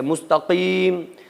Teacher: مستقیم قاف زبان کی جڑ سے